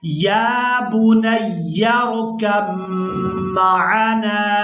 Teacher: کاف کو میم مشدد کے ساتھ ملائیں گے اور غنہ کے ساتھ ادا کریں گے